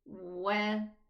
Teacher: This waw is never elevated. So we say wa, opening sideways a little bit for the fatha.